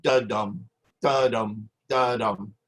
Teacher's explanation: consisting of two syllables unstressed followed by stress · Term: iambic